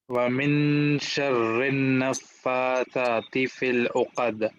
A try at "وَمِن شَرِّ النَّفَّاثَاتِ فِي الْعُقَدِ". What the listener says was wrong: شرن میں ذرا غنہ اور کرنا ہے، وَمِن شَرِّ النَّفَّاثَاتِ فِي الْعُقَدِ.